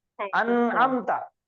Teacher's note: انعمتا نہیں, انعمتا. تو نون حروف قلقلہ میں سے نہیں ہے, تو کبھی بھی اس کے اوپر آواز نہیں ٹکرائیں گی, زبان ٹکرا کے واپس نہیں آئے گی.